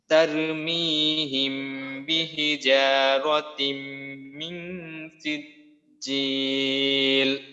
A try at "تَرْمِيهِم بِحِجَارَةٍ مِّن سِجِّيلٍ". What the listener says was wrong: এখানে কিন্তু এই গুণাটা সম্ভবত প্রায় হয়নি। সব গুণাগুলো আমরা অন্তত এক আলিফ পরিমাণ অবশ্যই গুণা করব। মিং, মিং নাকের ভিতরে যে লুকাতে হবে, মিং।